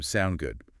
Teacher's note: the short form sound good again with that upward inflection